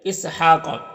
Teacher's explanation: کھڑا زبر ہے تو ایک الف کے برابر کھینچیں گے